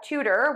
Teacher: we have two syllables syllable number one is stressed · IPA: /ˈtutər/